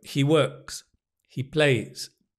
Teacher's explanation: Many students just go, He works, he plays, and you can't hear the s.